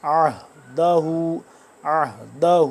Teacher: یہ والا جو عین ہے یہ حلق کے درمیانی حصے سے عین، اور ہا حلق کے آخری حصے سے نچلے حصے سے